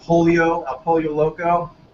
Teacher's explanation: the Spanish way of saying the double L's, where it sounds like a long Y